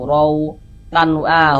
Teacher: Maka ini huruf ro ini kalau dia memiliki memiliki tanda baca baris dua di atas seperti ini atau misalnya baris satu atau baris dua begitu ya fathah atau fathatain maka huruf ro dibaca tabkhim dibaca tebal